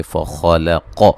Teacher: علقة قاف کو موٹا ادا کریں گے. فخلق خا کو موٹا ادا کریں گے، قاف کو موٹا ادا کریں گے